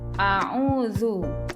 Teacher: U di sini dibaca panjang 2 harokat dan dinamai mad tabi'i atau mad asli.